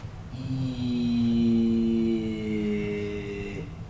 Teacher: the E vowel is the most high and most front vowel you can do in your mouth